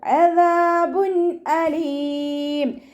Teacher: തെൻവീനിന് ശേഷം ഇൽഹാറിൻ്റെ ലെറ്ററായിട്ടുള്ള ഹംസ വന്നു. തെൻവീനിലുള്ള നൂനിനെ നമ്മൾ വ്യക്തമാക്കി മണിക്കാതെ ഓതുക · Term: ഇൽഹാർ